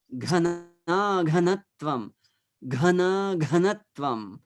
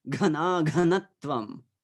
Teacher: this H is not the H that you are pronouncing from your chest or from your throat. It's the extra gush of air that should come from below, from your abdominal area. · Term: aspirated